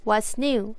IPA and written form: wʌts njuː (What’s new?)